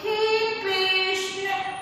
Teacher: हम किसी को पुकारते हैं तो बड़ी ऊंची आवाज में और देर तक स्वर को खींचते हैं। उसी परिस्थिति में प्लुत स्वर का प्रयोग होता है।